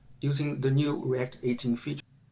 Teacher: And so the TH. It sounded like he said like duh, like with a D, rather than like a the